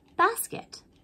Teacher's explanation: the first syllable bass has a short vowel sound that means the a says ah the second syllable ket has a short vowel sound as well